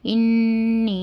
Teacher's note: نون مشدد ہے، اس لیے ہم گنہ کے ساتھ پڑھنا ہے۔ انی یا مدہ ہے، اس کو 2 حرکت کے برابر کھینچ کر پڑھنا۔